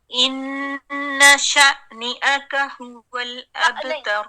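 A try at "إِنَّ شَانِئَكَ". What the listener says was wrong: دیکھیں اب میں دکھاتی ہوں آپ کو، آپ نے کیسے پڑھا ہے. آپ نے ایسے پڑھا ہے شا نی، یہاں آپ نے حمزہ لگا دیا. حمزہ نہیں لگانا. شا نیئک نیئک. ان شانئک.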